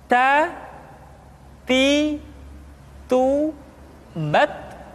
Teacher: huruf Ta ketika diucapkan terdengar ada nafas yang mengalir, atau dalam ilmu tajwid disebut dengan sifat al-hamas. · Keluar dengan menyentuhkan ujung lidah kita dengan gusi-gusi gigi seri bagian atas.